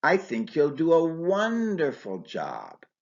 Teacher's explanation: Here, wonderful is stressed to emphasize reassurance. The voice goes up on wonderful and then falls on job.